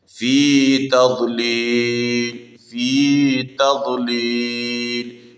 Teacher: في یا مدہ یا ساکن ما قبل کسرہ ایک الف کی مقدار پر پڑھنا ہے